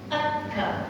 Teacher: Kalau pangkal lidah kita bertemu dekat dengan langit-langit yang keras, keluar kaf